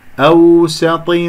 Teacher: الواو لين ساكنة قبلها مفتوح